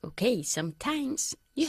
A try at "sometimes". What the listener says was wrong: mejor, sometimes, not sometimes. Sometimes, enfatizando la primera sílaba.